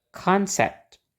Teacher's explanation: suku kata yang ada O-nya itu diberi tekanan.